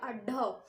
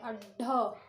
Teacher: उच्छिष्ट व्यंजन क्या होता है, ये देखिए, उच्छिष्ट व्यंजनों का जब हम उच्चारण करते हैं, अड्ढ, जो जिह्वा की हमारी नोक होती है, जीभ की जो नोक होती है आगे की, ये पतली सी नोक होती है, ये ऊपर तालु को स्पर्श करते हुए झटके से पीछे चली जाती है